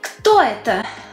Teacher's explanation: You're not raising your intonation like you do in yes-no questions.